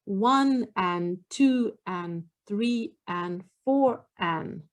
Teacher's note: when i say this i don't pronounce the d much · i just say an we don't we drop the d a lot